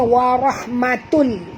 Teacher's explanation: masukkan bunyi tanwin ke dalam lam tanpa dengung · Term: idgham bilagunnah